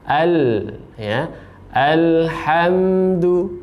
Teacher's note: lam ini masuk pada sifat tawasuth pertengahan jadi antara ditekan tapi juga ada aliran suaranya · lamnya tidak memantulkan suara ya, atau tidak ada tambahan suara menjadi al. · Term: al-ta'rif, sifat tawassud